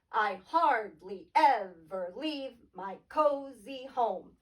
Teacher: Unstressed, stressed, Unstressed, stressed, unstressed, stressed, unstressed, stressed.